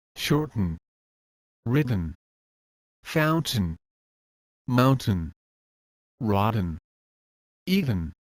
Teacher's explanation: T before the N is also a held T sound. But in this case the flapping motion is more in use.